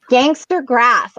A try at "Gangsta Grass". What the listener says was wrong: Not Gangster Grass. Gangsta Grass. There's no R in there. Gangsta Grass.